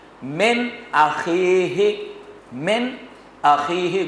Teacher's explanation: نون ساکن کے بعد حمزہ آیا اور وہاں غنہ نہیں ہوگا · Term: اظہار ہلکی